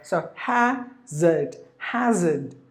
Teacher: In the British English, it is hazard without the letter R.